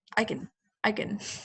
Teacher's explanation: It's like I and kin blend together.